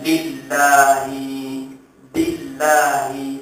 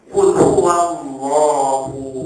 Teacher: Sedangkan sifat huruf lam itu hendaklah nipis apabila sebelum lafzul jalalah terdapat huruf berbaris di bawah.